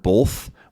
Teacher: I said the word both with sort of this weird L sound in there, which people point out and make fun of, but it is relatively normal.